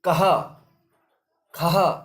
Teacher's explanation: जो ह की आवाज ध्वनि वहां पर आती है इसको आप विसर्ग समझेंगे